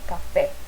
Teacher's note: café a sílaba tônica é a última então por isso que ela é oxítona